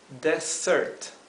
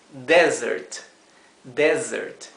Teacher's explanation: cambió la sílaba tónica ahora es la primera sílaba y la s suena como un zumbido